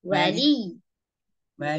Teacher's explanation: kalau mau berhenti, wali, tanpa dipanjangkan